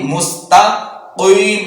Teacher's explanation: سین باریک سیٹی کے ساتھ، تا باریک